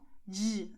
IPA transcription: dʒ